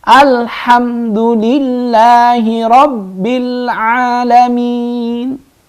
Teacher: Nggak boleh misalnya baca alaham karena lam bukan qalqalah. Alham harus jelas.